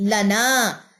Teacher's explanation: لنا نون لمبا ہوگا کیونکہ یہ الف مد ہے، 2 کاؤنٹ لکھیں۔